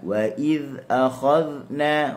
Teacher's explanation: huruf dhal hujung lidah di hujung gigi atas. Okey, cuma perlu kita ingat, okey, huruf dhal ni dia bersifat dengan rakhawah.